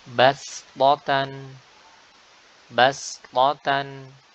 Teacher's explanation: Pastikan sinnya itu tipis sehingga tidak terbaca atau terbawa menjadi huruf shot yang notabene tebal. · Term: huruf sin